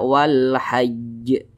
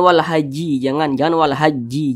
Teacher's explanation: Huruf jimnya ini kita sukunkan atau kita matikan.